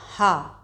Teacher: यानी इसका उच्चारण स्थान हमारा कंठ आप ह तो कंठ के भीतर से आवाज आती है · हा का उच्चारण स्थान स्वर यंत्र है, यानी इसका उच्चारण स्थान हमारा कंठ।